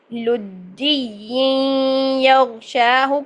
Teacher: شا 2 حرکات جتنا لمبا کریں گے کیونکہ یہاں پر کھڑی زبر ہے اور کھڑی زبر کو ہم 2 سیکنڈ کے لیے لمبا کر کے پڑھتے ہیں الف مدہ کی طرح، ٹھیک ہے؟